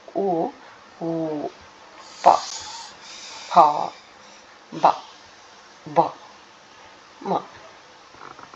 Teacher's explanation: ಓಷ್ಟಿ ಅಂದ್ರೆ ತುಟಿ ತುಟಿಯ ಸಹಾಯದಿಂದ ಹುಟ್ಟುವ ಅಕ್ಷರಗಳು